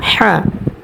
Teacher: এ হাটা আমরা দুই নাম্বার মাখরাজ হতে হলকের মধ্যখান হতে উচ্চারণ করব